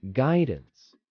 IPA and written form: ˈɡaɪdəns (guidance)